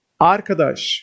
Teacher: while addressing someone or something, the first syllable is stressed in Turkish. Especially in poems, remember, arkadaş, which means friend.